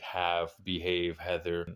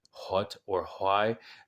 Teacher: that little extra constriction you do when you make the H sound that is the hard H but because these are two different